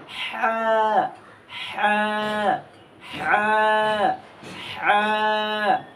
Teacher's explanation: আর হাটা উচ্চারণ হবে এই যে গলা আছে না, এই যে গলার মাঝখান থেকে আমরা হা উচ্চারণ করব।